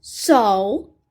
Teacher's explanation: o dialeto de Belo Horizonte não é falado o som do L ao final da sílaba · porque simplesmente ao falar, o som do L não sai. Então, pode ser escrito com U, e daí, ao invés do substantivo, temos um verbo.